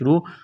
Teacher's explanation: را کو موٹا کرنا ہے، پیش کی وجہ سے واو ساکن سے پہلے پیش ہے، حروف مد واو ہے، ایک